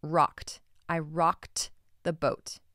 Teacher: That ED makes a T sound because the last consonant is a K. It is an unvoiced consonant, right?